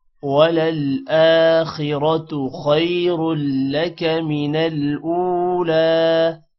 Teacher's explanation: خیر لک خوا موٹا ہوگا اور یہاں پر بھی را موٹا ہوگا۔